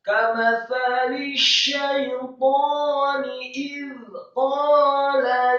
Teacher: za-nya disukunkan tipis, lidahnya agak keluar sedikit